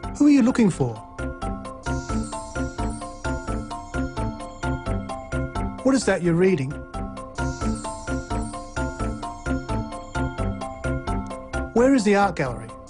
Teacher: So a falling tone is used for wh and how questions.